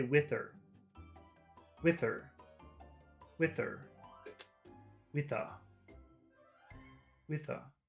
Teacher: In some types of English, people don't pronounce H's, ever. So that word her becomes part of the word in front of it.